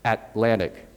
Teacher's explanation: at the end of a syllable you would say at lanta or that's how I pronounce it Atlantic you don't release the T